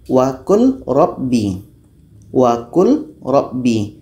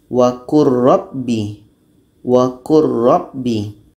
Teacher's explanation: bunyi lam masuk kepada roh wakur Robby wakur rockby secara hukum lam mati bertemu ro hukumnya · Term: idgham Kamil